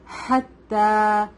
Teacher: ہا از come from the middle part of the throat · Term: ہا شارپ ہوگا